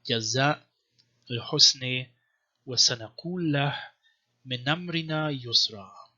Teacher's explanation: an example for glottal stop because it's after word final long a, jaza. Okay, you see it written here.